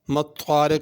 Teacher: ما الطارق اس میں وہی طا اور قاف ہے، تا اور چھوٹا کاف نہیں پڑھنا۔